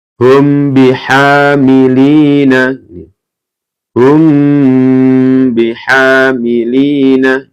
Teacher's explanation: ketika ada mim sukun bertemu dengan ba itu dibaca mendengung